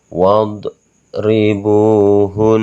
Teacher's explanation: Cara membacanya itu harus ditekan sebanyak 4 ketukan, dan huruf nun ini tidak dibaca tasjid dan fathah, tapi kita sukunkan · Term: nun bertasjid